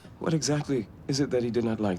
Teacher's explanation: takes these short, shallow breaths between his questions.